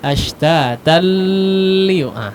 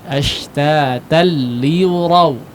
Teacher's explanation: Memang diidghamkan tapi bukan idgham yang digunnahkan.